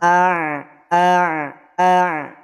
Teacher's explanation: huruf Ain itu tidak masuk pada huruf hidung tidak masuk pada hidung